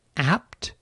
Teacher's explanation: when p occurs before another stop sound, like an apt, the p will be unreleased